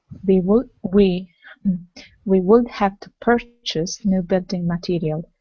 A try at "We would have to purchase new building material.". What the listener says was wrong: Okay, good.